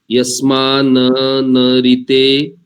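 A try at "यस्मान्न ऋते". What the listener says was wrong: रुको, यस्मान न नहीं करेंगे, यस्मान न, एक नकार आधा है, एक नकार पूरा है, तो यस्मान न रिते किंचन।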